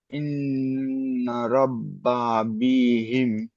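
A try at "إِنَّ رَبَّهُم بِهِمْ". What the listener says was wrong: একটু হয়নি, একটু খেয়াল করে, ইন্না রব্বাহুম বিহিম। রব্বা, এই হুম বিহিম পড়েন, পড়েন, বলেন রিডিংটা পড়েন। ইন্না, ইন্না রব্বাহুম বিহিম, হুম বিহিম, হুম। এই হুমটা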